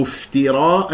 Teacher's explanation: الفاء يجري فيها صوت والنفس اسمع صوتها جيدا